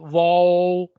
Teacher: جب ہم واو کہتے ہیں تو یہ دونوں ہونٹوں کو گول کرنے سے اس کی گولائی کی آواز سے نکلتا ہے.